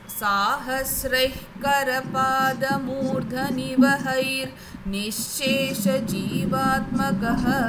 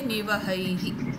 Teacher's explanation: if you want to say it continuously you can have a repah ra sound